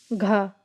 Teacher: कंठ महाप्राण घोष व्यंजन वर्ण का उदाहरण